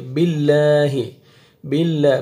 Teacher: پہلے کسرہ زیر آ رہا ہے، تو لام کو باریک پڑھیں گے